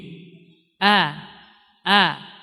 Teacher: Jadi suara langsung keluar dan rendah, keluarnya dengan dari jalan yang rendah. Artinya dia tidak meninggi. Berbeda dengan lawannya isti'la. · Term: istifal